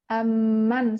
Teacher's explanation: ketika mim yang sukun bertemu dengan mim yang berharokat, maka hukumnya di sini diidghamkan. Mim yang sukun ini akan kita idghamkan ke mim yang berharokat.